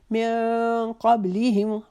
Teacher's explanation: نون ساکن کے بعد قاف آ رہا ہے، اس کو ہم ایک الف کے جتنا اپنی نون کو اپنی ناک کے بانسے میں اس کی آواز چھپائیں گے، اخفا کریں گے